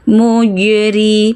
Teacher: melambung ringan itulah qalqalah sughra. Mujri, mi itu pendek, ri langsung ke mi.